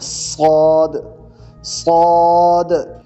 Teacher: صاد کو، سین کو ہی موٹا کریں اب تو صاد ہو جائے گا، صاد، صاد۔ صاد کو پڑھتے ہوئے آپ کی آواز موٹی ہوگی، آواز تھک ہوگی، تو صاد پڑھا جائے گا۔